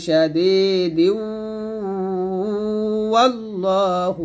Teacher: আর যদি মিল করে পড়েন তাহলে শাদীদু হবে, দালকে ওয়াওকে ধরে ফেলবে, কারণ তানবিনের পর কি আসছে ওয়াও আসছে, তো তানবিনের পর ওয়াও আসার কারণে আমরা মিলায় পড়ব, গুণনা করবে